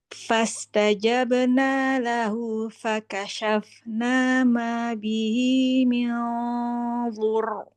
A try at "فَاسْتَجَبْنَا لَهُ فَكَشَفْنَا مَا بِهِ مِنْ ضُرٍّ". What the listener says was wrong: Iya, bagus. Bagus.